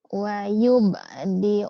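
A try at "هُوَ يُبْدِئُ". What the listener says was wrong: Huwa, huwanya ketinggalan, hai. Huwa, Iya, huwa yubdi'u wa yu'idu.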